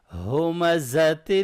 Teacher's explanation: ہا کو ہیوی پڑھیں گے گلے کے نچلے حصے سے، سینے کی سائڈ سے